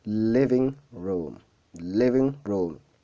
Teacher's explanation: Le stress primaire, il se trouve à live. Et le stress secondaire, c'est room.